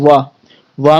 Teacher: दोनों ओठों का क्या होता है मिलन होता है